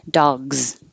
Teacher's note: it looks like an S but it sounds like a z so if your voice is on leave it on